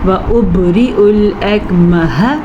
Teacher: وَأُبْرِئُ الْأَكْمَحَ، وَأُبْرِئُ، با پہ کلکلا ہو رہا ہے، حمزہ پہ پیش ہے تو اس کو ہم نرمی سے پڑھیں گے، عین میں کنورٹ نہیں کریں گے